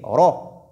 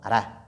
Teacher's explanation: En Hafs, par exemple, lorsque la lettre Ra porte Fatha, elle est lue de façon emphatique. Je dis Ra et non Ra.